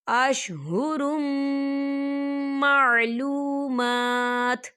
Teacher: یہاں دیکھیں اشہرم، را کے اوپر تنوین ہے اور تنوین کے بعد میم آ رہا ہے، اور میم جو ہے حروف یرملون میں سے ہے، تو یہاں پر ادغام ہوگا اور ہم اسے غنے کے ساتھ پڑھیں گے